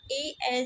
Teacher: ए जो है ये आपका कंठ तालव्य ध्वनि है।